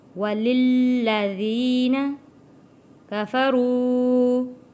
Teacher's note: وَلِلَّذِينَ کفروا، یہاں پہ 2 لام ہیں، ایک لام کے نیچے زیر ہے اور ایک کے اوپر تشدید اور زبر، یہاں پہ جس کے اوپر تشدید ہے سختی کے ساتھ تھوڑا رک کر اس لام کو ادا کریں گے۔